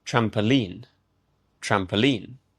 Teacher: Again, the stress is on the final syllable, the last sound.